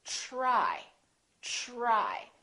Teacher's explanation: We say try, try. So the TR together make this sound almost like a CHR, almost like ch, but it's a softer one. It's ch, try, try.